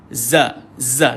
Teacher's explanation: kalau zaai ni tuan-tuan dia duduk di hujung lidah dia